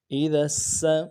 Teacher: حمزہ زیر ای، حمزہ زیر ای، ذال سین زبردس، سیٹی والا حرف ہے، سین باریک ہوگی، ذال کو سین کے ساتھ ملائیں گے۔